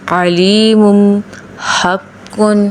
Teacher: دوسرا حروف حلقی ہے حلق کا درمیانہ حصہ یعنی وسط حلق۔ حروف عین اور ح ادائیگی گلے کے درمیانی حصے سے۔